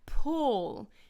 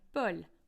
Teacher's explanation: a lot of an audible release of air happens on the p and you don't get that in the French version